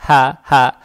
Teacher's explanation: мягкая, она произносится на выдохе, то есть гортань не надо напрягать